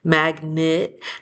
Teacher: That's because in the second syllable, that E really turns into a schwa sound, which is just like a lazy vowel. So instead of saying it magnet, we usually end up just saying magnet when we read or when we're talking.